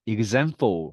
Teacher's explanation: example 할 때는 네, 그즈 발음입니다.